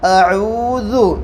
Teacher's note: حمزہ کو بالکل نہیں کھینچیں گے، زبر کی حرکت جلدی پڑھیں گے